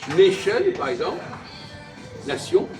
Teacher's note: je ne prononce pas le on, hein, comme dans song